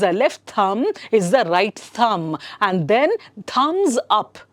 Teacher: you don't have to say the sound of b there